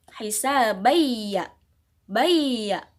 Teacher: ada fathatain bertemu dengan huruf ya maka cara bacanya adalah Idgham Bighunnah memasukkan dengan dengung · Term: idgham bigunnah